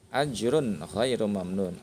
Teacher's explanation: Ada domatain, ada tanwin bertemu dengan huruf ghain ya, dibacanya jelas. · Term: idhar halqi